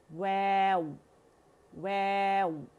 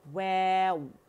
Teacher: हमारे होंठ जो हैं वो हमने फ्रंट में फॉरवर्ड आउटवर्ड पुश किए हुए